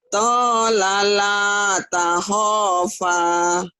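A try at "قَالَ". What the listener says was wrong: Ini bukan to tapi ko ya Bu ya. Ya, bukan to. Ko.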